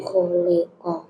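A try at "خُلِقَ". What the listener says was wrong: Nah, begitu. Bedakan dengan ha ya.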